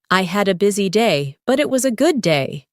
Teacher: Notice how your voice rises slightly at busy day and falls softly at good day. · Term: intonation